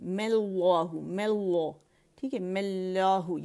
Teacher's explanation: می کو ہم نے کیا کھینچا، 6 کاؤنٹ کھینچا. اور جو میم ہم نے کہنا تھا ساکن اس پہ ہم نے زبر لگا لی. اور یہ جو حمزۃ الوصل ہے یہ جو ہے یہ امٹ ہو جاتی ہے. تو ڈائریکٹ ہم نے اسم الجلالہ سے اسے جوڑ دینا، مل اللہ، مل اللہ، ٹھیک ہے، مل اللہ.